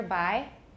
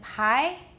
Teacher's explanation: bi has no aspiration it's not really voiced either by but pi is of course voiceless but it has aspiration · the biggest difference between buy and pie is not a difference in voicing but a difference of aspiration